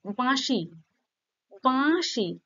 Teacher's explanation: একটা নাকি নাকি স্বর আসছে, তাই না? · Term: অনুনাসিক স্বরধ্বনি